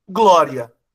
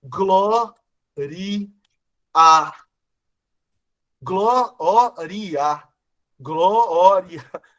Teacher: O que era para ser uma paroxítona terminada em ditongo, eles pronunciam no cântico como proparoxítona.